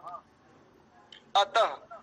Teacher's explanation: इस विसर्ग का अर्थ होता है लगभग आधा हकार, आधा ह